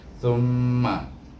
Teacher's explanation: Itu cakap Melayunya, wajibul gunnah. Jadi kita kena dengungkan huruf mim ni, iaitu huruf apabila menyebut thum, ada dua harakah sekurang-kurang